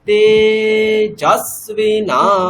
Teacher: আমরা দ্বিতীয় স্বরটাকে নেব জকারে, তাহলে তে উপরে বলবো, জ নিচে বলবো। হ্যাঁ, তেজস্বিনা এরকম। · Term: অনুদাত্ত স্বর